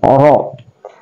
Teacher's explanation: Jadi kalhijar, ra adalah tarful lisan, dia juga adalah huruf ra yang tafhim atau dibaca tebal ya